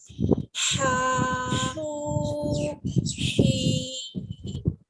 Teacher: ہا کو ہم تھروٹ کے مڈل والے پارٹ سے پڑھتے ہیں، اس میں ایئر آتی ہے ہمارے منہ سے، یعنی ہوا باہر آتی ہے.